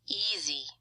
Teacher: easy is a 2-syllable word with primary stress on the first syllable. And you can already see just by the energy that we put on that first syllable, the energy is going to show up vertically.